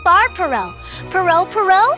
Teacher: The key is one quick tap. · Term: single tap